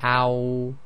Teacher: when you say ow, the back of the tongue raises up